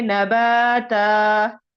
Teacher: जैसे नबातन, तन दो जबर है, वक्फ की सूरत में हम उसको एक अलिफ में बदलेंगे और नबा को एक अलिफ के बराबर ही लंबा करेंगे, पढ़ेंगे नबाता।